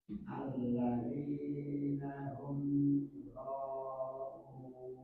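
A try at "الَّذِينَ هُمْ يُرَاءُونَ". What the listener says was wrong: Roknya kurang panjang 4 harokat. Yura'un.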